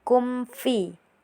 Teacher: mim sukun bertemu dengan fa. Jadi baca jelas tanpa dengungan berlebihan atau peleburan saat bertemu dengan huruf fijaaiyah selain mim dengan ba. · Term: izar syafawi, izhar syafawi